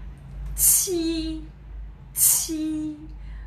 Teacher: Chúng ta sẽ phải bật mạnh luôn hơi ra nhá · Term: âm bật hơi